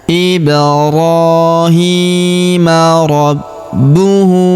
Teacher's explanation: Huruf bu kita tahan dan kita tekan karena terdapat tanda tasydid di atasnya. huruf hu kita panjangkan dua harakat karena berharakat u terbalik seperti ini ya.